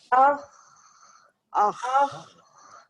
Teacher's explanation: مخرج بند نہیں ہوا بلکہ آواز نکل رہی ہے اپنے مخرج سے ٹریول ہو رہی ہے